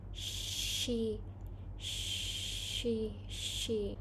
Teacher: The next one is alveopalatals, sounds made by placing the tongue at the very front of the palate near the bony ridge